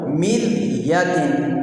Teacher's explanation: را ساکن ہے، را کے اوپر جزم ہے، لیکن اس سے پہلے والا جو حرف ہے میم، اس کے نیچے زیر ہے، لہٰذا را کو بھی باریک پڑھیں گے